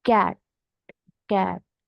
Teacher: the back of the tongue touches the Vellum